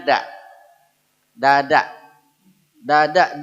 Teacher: letaknya ketinggian Nanti pada di sini jadi bunyinya da dada dada d-nya Sunda itu meletakkan ujung lidah terlalu tinggi